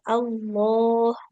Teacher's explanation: Nah, jadi tanpa ada W, tidak ada Iya, Allah ya. Jangan seperti ada wawunya ya. Lalu langsung lam, tapi lamnya lam tebal.